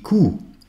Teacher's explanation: Die Kuh se prononce avec un OU long.